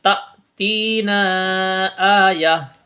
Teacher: تا کو یہاں پر ہا پڑھیں گے کیونکہ جب بھی آیت آتی ہے تو تا کو ہا سے بدل کے پڑھتے ہیں. آیہ اور حمزہ ساکنہ کو جھٹکا دیتے ہیں تو یہاں پر ہم جھٹکا لگا کے پڑھیں گے تأتینا آیہ.